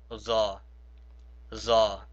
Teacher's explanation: Rather than sticking it in between my teeth and sayingthe', I stick my tongue to the roof of my mouth and make the buzzing sound as in the zah. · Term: zaw